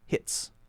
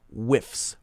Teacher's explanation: we're going to not voice the s sound